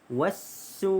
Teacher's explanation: Wassu ini adalah alif lam syamsiyah, maka di sini tidak ada lam. Alif lam tu tak bunyi. · su itu dibaca dengan panjang 5 harakat kerana mad wajib muttasil, iaitu hamzah mad asli huruf wa bertemu dengan hamzah dalam satu kalimah.